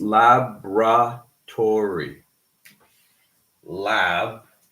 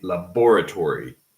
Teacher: We do not say the first O. That is a case of elision. So it's laboratory.